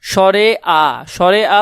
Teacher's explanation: উচ্চারণ করার সময় দুই ঠোঁটের মাঝখানে ফাঁকা জায়গা বেশি থাকে তাই এটা হলো একটা বিবৃত স্বরধ্বনি